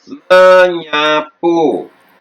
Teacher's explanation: Fonem S luluh menjadi NY.